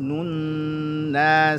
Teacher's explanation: nun tasydid dibaca gunnah di situ, nun yang dibaca gunnah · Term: nun gunnah